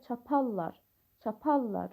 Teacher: Bir də var feil kimi, qatallar, r samiti l samitinə keçir